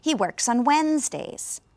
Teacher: You notice the D is not really pronounced, when, and then that E isn't really pronounced either.